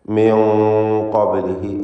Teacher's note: ഇസ്തിഅലാഇൻ്റെ തഫ്ഖീം ചെയ്തുച്ചരിക്കപ്പെടുന്ന 7 ഹർഫുകളിൽ ഒന്നാണ് ഖാഫ് എന്നതുകൊണ്ട് അതിന് തൊട്ടു മുമ്പിൽ വന്ന സാക്കിനത്തായ നൂനിനെ മണിക്കുമ്പോഴും തഫ്ഖീം നൽകണം. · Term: ഇഖ്ഫ ഹഖീഖി